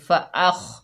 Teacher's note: खौ रुफ़े मुस्तआला में से है, मोटा हरूफ है तो मोटा पढ़ा जाएगा। रॉ के ऊपर ज़बर है, रॉ को पूर पढ़ेंगे रॉ।